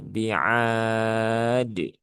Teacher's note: maka biar tidak menjadi huruf T ya, maka tunaikan saja qalqalahnya · pastikan kolkolahnya jangan hilang ya. Karena masih ada beberapa yang hilang menjadi bi'at. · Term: qalqalah kubra